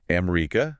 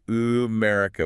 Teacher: The vowels are stretched. In English, we swallow the vowels. We say America. We rush through it. >> Right? >> In Arabic, you articulate them.